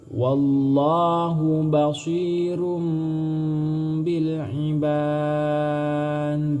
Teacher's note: Apabila ada huruf dal di akhir kalimat atau di akhir kata, huruf dal ini termasuk huruf qalqalah, berarti cara membacanya harus memantulkan bunyi bacaan